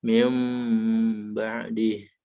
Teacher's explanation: Mengganti, jadi yang harusnya nun, bunyi nun ganti dengan bunyi mim. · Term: iklab